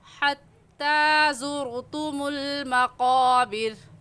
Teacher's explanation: حتی میں بھی حلق کے درمیان سے ہا نکلتی ہے تو اس کو حلق کے درمیان سے نکال کر پڑھیں گے۔ · مخارج اسے کہتے ہیں کہ ہم الہاکم میں ہا کی جگہ ہا اور ہا کی جگہ ہا نہیں نکالیں گے۔ حتی میں بھی حلق کے درمیان سے ہا نکلتی ہے